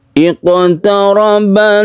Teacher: di sini ada qaf yang bersukun, berarti dia itu qalqalah. Karena di tengah kata maka disebut qalqalah sughra.